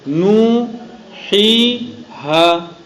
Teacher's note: تو نوحیہا میں تینوں حروف مدہ کو ایک ہی انداز سے، ایک ہی مقدار سے ادا کرنا چاہیے. ایسا نہیں کہ نو میں تو زیادہ مت کیا، ہی میں کم ہو گیا، یہ بھی غلط.